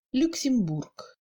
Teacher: dans ce mot, on entend plutôt le OU, et le Y se prononce brièvement, comme un E muet français.